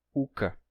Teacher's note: Então, é uma característica de línguas daquele local que estão em contato e terminaram ficando com esse sistema vocálico de 4 articulações vocálicas, sendo que pode ser oral ou nasal. Por isso, por essa ausência de O, uma palavra como oca, que significa casa, se pronuncia uca.